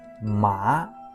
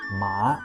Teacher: second tone rising like you are asking a question